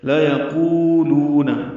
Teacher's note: لام کو جلدی ادا کرنا ہے، لام کو بالکل لمبا نہیں کرنا ، قولو دونوں واو مدہ ہیں، دو حرکات لمبے کریں گے،